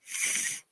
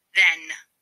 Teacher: The th is a voice fricative consonant sound.